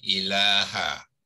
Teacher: Jadi dalam membaca, lam ni kita bacakan sepanjang 2 harakat.